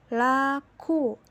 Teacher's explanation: pada posisi lidah di belakang atau back, terdapat fonem U